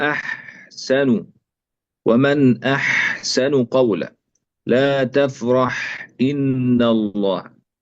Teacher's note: الحاء تخرج من وسط الحلق مثل العين، ومن صفاتها الهمس والرخاوة والاستفال والانفتاح، يعني يجري مع الهواء، وهي صوت رخو، يعني الصوت يجري في مخرج الحرف، وهي من الحروف المستفلة، ليست مفخمة، وهي منفتحة أيضا، يعني اللسان لا ينطبق فيها على الحنك الأعلى. · طيب، يراعى عند الحاء أولا همسها نحو أحسن، لا تفرح إن. ينبغي بيان الهمس في حرف الحاء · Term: صوت الحاء